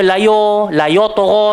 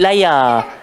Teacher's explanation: yang tebal cuma huruf ta sahaja, huruf ya jangan ikut terkesan sebab ada orang baca layo tagha, tak betul.